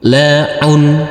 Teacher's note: Huruf ain yang berdhamah tanwin ini jangan lupa dikasih akhiran huruf n.